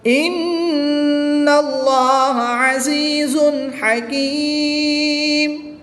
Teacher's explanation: نون مشدد میں ہمیشہ غنہ ہوتا ہے تو یہاں پر غنہ کر کے پڑھیں گے